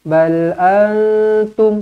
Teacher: nun kosong bertemu dengan ta, ikhfa hakiki, dengungkan 2 harakat